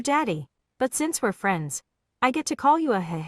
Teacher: It's like a creepy, breathy whisper, which turns into a creepy, evil laugh.